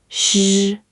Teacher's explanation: Now the third sound, sh. Curl the tongue back and just let air flow smoothly, like the sh in shoe, but with that curl.